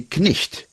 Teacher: For example, K-N-I-G-H-T used to be knicht, and we pronounced the k, and the GH was a h